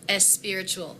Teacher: She was a native Spanish speaker, and as she gave her speech, she said the word spiritual and she pronounced it espiritual with that E vowel